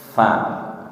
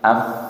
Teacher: Kalau fa dipastikan bibir bawahnya menyentuh ujung gigi seri atas.